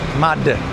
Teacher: tip of my tongue goes to the roof of my mouth and then I let go of it while I'm still making a sound